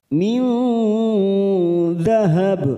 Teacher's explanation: nun sukun bertemu dzal, ikhfa hakiki. Kita samarkan 3 ketuk